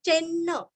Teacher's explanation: जैसे अन्न का उच्चार करते हैं ना वैसे दो न का उच्चारण